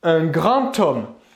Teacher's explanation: lorsque l'on va réaliser la liaison avec le mot grand, eh bien cette liaison va se prononcer T, bien que la dernière lettre du mot grand soit un D. Ici, on va prononcer la liaison T.